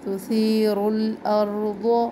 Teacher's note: अब यहाँ पे रॉ को भी मोटा पढ़ना है, ज़ौद को भी मोटा पढ़ना है